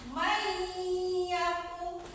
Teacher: tahan dulu nunnya dihilangkan dileburkan ke huruf ya. Jadi panjangkan empat harakat atau tiga dan cara menghitungnya bisa pakai jari atau bisa pakai ketukan.